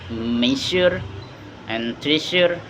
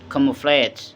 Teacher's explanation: voice, post alveolar, and fricative. Same tone position as sh, but with vocal cord vibration.